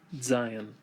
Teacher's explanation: you can hear people pronounce it with a DZ sound